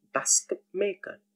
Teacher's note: T sound in these three cases is assimilated and it's coming out as P · T in combination with M changes to P